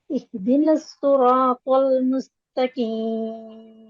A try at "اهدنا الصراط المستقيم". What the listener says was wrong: Yeah, this one better. And do the lam lighter little. Don't say tal. Tal, as we said, tal will be heavy lam. heavy. Also, forgot the ta now and say the lam light with hamza. Say al.